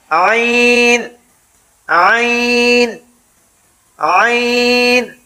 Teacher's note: جیسے ہا حلق کے درمیان سے ادا ہوتا ہے اسی طرح عین